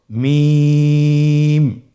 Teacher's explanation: 2 ঠোঁট চেপে ধরে আমরা উচ্চারণ করব মিম